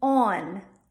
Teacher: So for the word on, we're going to add a little schwa after that aw.